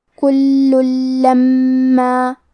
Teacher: لام حروف الادغام بغیر غنہ میں سے ہے تو ہم تنوین کو لام میں ملا کے بغیر غنہ سے لیکن تشدید کے ساتھ یہ حکم کو ادا کریں گے کل لما. کلمت لما میں حرف المیم پہ تشدید ہے تو ہمیں دو حرف کے برابر میم کو پڑھنا ہے